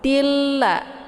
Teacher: harokat tanwin itu hilang ya, langsung ditasydidkan ke dalam bunyi lam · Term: idgham bila gunnah